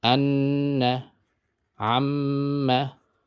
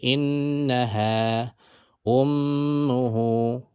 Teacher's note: You hold it for 2 harakat and nasal. Gunna means nasal, right?